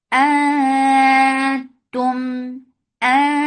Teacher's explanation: Hamza is sharp, fatha open jaws attached with noon. This is ikhfa. So you are hiding the sound of noon.